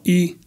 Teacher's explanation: F1 or formant one tells you the height in the mouth where it's pronounced a vowel is pronounced and F2 or formant two tells you the depth or how far back or front in the mouth a vow is pronounced for example as we know the vowel e is pronounced in a high front position